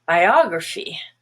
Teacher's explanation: biography has the stress on ah and the rest is schwa